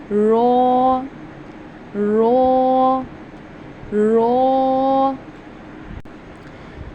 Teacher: आपकी जुबान की नोक और ऊपर का तालू वहां से अदा कर रहे हैं।